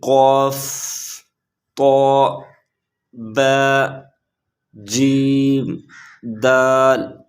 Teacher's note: جب ان حروف کو پڑھتے ہیں تو اس سے آواز گھومتی ہے اور تھوڑی سی بلند ہو جاتی ہے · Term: حروف قلقلہ